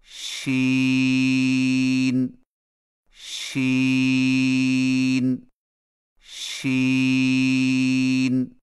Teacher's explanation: سین سین سین. شین کی ادائیگی میں زبان کے درمیان کو تالو کی طرف بلند کرتے ہوئے باریک اور پھیلتی ہوئی آواز میں پڑھیں